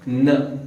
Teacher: जीभ का टोक ऊपर के जबड़े में दांत के एज को दांत के बेस को जाकर लगता है। इसमें जीभ ज्यादा मुड़ने उड़ने का चांस नहीं है।